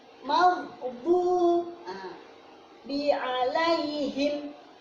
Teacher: Ghain ketika sukun, bukan mag. Tidak boleh dipantulkan karena bukan qalqalah. Diputus. Bukan magdu, bukan.